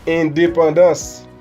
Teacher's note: con salida nasal. La N en este caso no se pronuncia